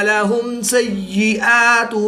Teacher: میم ساکن کے بعد حرف با اور میم کے علاوہ حرف سین ہے تو یہاں پر اظہار شفوی ہوگا، غنہ نہیں کریں گے بلکہ میم ساکن کو ظاہر کر کے پڑھیں گے